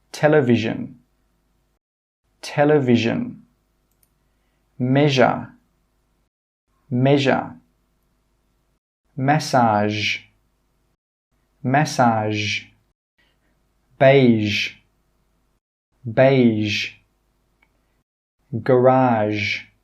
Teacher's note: the Zhou sound is a continuous sound you can hold it for a long time · with the zh sound your tongue is not touching the top of your mouth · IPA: ʒ